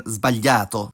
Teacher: S also becomes z before a voiced consonant, like in sbagliato.